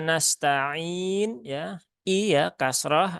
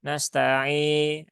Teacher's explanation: nah itu miring ya, sehingga muncul imalah ya, suara seperti huruf e begitu kan. Bisa e, bisa e, nah, nanti tergantung imalah apa ya, sugro atau kubro.